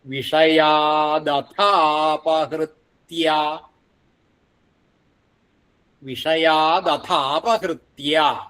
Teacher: വിഷയാദഥ അടുത്തത് അഥ എന്ന് കഴിഞ്ഞിട്ട് അപഹൃത്യ അപഹൃത്യ അപഹൃത്യ അപ്പോ അഥ അപഹൃത്യ അഥാ അപഹൃത്യ എന്നാവും എന്നുള്ള ദീർഘം അതും ശ്രദ്ധിക്കണം വിഷയാദഥാപഹൃത്യ വിഷയാദഥാപഹൃത്യ പിന്നെ ആസ്മഹേ എന്നാണ് ആ ഇവിടെ ആ പ്രസന്റ് ചെയ്തതിൽ അപഹൃത്യാ